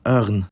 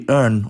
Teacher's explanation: Also, /r/, which is subject to the most regional variation of any Swedish consonant, has an allophonic form in front of alveolar consonants that varies by region: In southern Sweden, it becomes the voiced uvular trill [ʀ], while in northern Sweden, it disappears, but makes the consonant after it retroflex, meaning the tongue curls and the bottom of it touches the roof of the mouth.